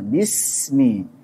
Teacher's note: dan sin tipis, tajam, dan mengalir suaranya.